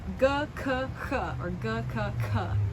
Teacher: D, t, th, or d, t, t. And then these are velars because you make them with that soft part of your palate in the back called the velum